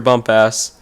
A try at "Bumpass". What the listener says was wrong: Bumpus. Bumpus. It's Bumpus. It may be spelled like that, but it's pronounced Bumpus.